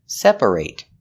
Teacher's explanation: Example, I need to separate my laundry. And the reason we pronounce it ate in the verb separate is because that syllable is stressed. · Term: long A sound